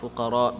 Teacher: because ra has a fatha on top, so it's going to be full mouth.